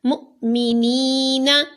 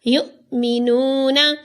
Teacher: اب اس میں حمزہ ساکن ہے تو اس کو جھٹکا دے کر پڑھا